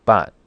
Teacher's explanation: sharp falling tone with a heavy glottal stop